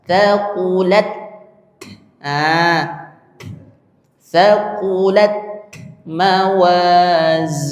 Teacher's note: Ingat ta itu hames. Ta itu berhembus anginnya. Tsaquat tapi bukan es.